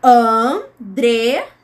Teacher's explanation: São 3 sílabas. Bem, a sílaba tônica é a do meio, ela é a penúltima